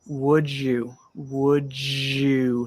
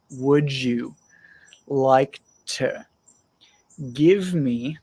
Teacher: when speaking naturally we normally have a bit of a j sound